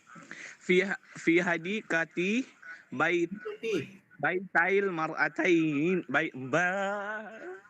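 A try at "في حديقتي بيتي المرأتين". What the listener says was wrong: Hindi, ang basa, ulit, fi hadikatay, tay. Kasi hadikatay nina, yan ang original. Mayroong nun yan kasi dual.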